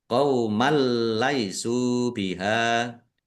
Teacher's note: Bacaan idgham bila ghunah. Masuk tetapi tidak mendengung. Masuk ke huruf lam.